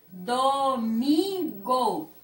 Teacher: O mi é a sílaba mais forte